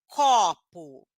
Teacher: quando eu falo a palavra copo o primeiro o ele é aberto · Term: o aberto